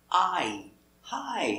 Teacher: using the long I sound it's made up of two sounds it is the sound ah and the sound e